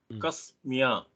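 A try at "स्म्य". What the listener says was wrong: You used a ka in the beginning for pronunciation. smya. This one is not too difficult without anything. Smya.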